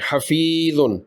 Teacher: یا سے پہلے فا کے نیچے زیر ہے، اس کو 2 لمبا کریں گے